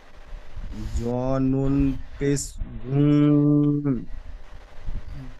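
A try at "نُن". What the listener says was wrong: জ নুন পেশ জু, না টান হয়ে যাচ্ছে, গুন্না হচ্ছে না। হাম, জ নুন পেশ জুন, জুন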